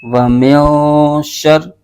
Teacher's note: یعنی نون ساکن میں غنہ کر کے پڑھیں گے۔ تو اب اخفا ہو رہا ہے تو یہاں پر غنہ کریں گے۔